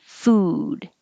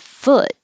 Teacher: food has just the ooh sound food but foot has the uh like took so don't round your lips and keep your jaw high your tongue a little well it's